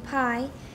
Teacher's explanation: But in pi, after the release of the lip closure, there is a moment of aspiration, a period of voicelessness after the stop articulation and between the start of and before the start of the voicing for the vowel.